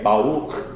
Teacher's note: You roll from the back of the throat, not the front. So it makes it sound like, so you say Baruch.